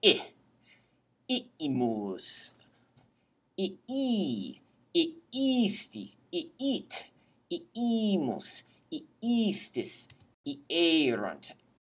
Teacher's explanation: if you say it correctly, separating the two I's into two separate syllables, then that'll be a clue to your ear that there's a separation between now, the imus, and the action back then.